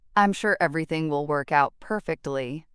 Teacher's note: I'm sure everything will work out perfectly, hope tinged with doubt. The emphasis on sure and perfectly reveals the speaker's uncertainty despite the positive words.